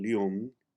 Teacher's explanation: the double l in lium is a combination of l and y much like you would say the word million now for the